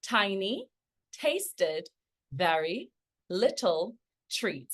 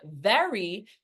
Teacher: and again obviously when we're looking at very we see how the lip must for example be in contact with the upper teeth in order to pronounce that sound very